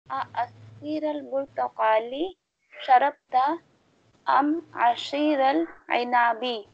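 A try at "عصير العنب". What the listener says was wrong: اچھا یہ سواد کی آواز آپ اسے شین میں کنورٹ کر رہی ہیں ویسے دوبارہ پڑھیں عشیر العنابی پڑھیں ذرا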